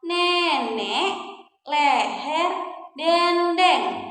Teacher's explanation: kita juga punya ya bunyi e madya bawah depan